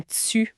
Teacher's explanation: Le T devant U ou I, qui peut prendre un son un peu afriqué, comme tsu pour tu.